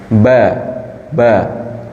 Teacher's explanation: pertemuan antara bibir atas dan bibir bawah dengan lembut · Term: huruf ba